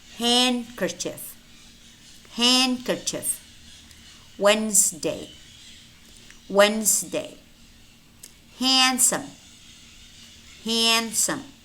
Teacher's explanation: we do have words which contain the letter D, but it's silent